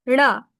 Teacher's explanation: শক্ত তালুর একদম আগ থেকে, ওটা হচ্ছে মূর্ধা বলে ওখানে, ওখান থেকে আসবে জিহ্বাটা